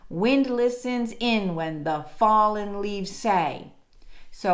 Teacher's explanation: what is this meter I'm gonna say it is dactylic tetrameter dactylic being stressed unstressed unstressed · we have one two three four stressed beats so that makes this tetrameter